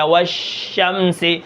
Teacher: تفشی کا مطلب شین کے اندر ہے آواز پھیل جاتی ہے